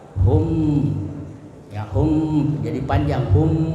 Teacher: harus disuarakan samar-samar di bibir dan didengungkan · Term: ikhfa syafawi